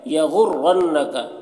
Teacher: را کو پر پڑھیں گے، نون مشدد ہے، نون میں غنہ ہوگا